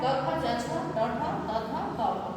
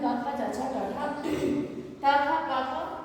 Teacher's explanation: अघोष होता है वर्ग का पहला और दूसरा व्यंजन